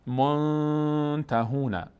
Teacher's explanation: نون رو بعد از بینی ادا کنیم، مقداری هم روش نگه میداریم صدا رو. منتهون. جنتون تنوین بعدش حرف تا آمده اخفا میشه.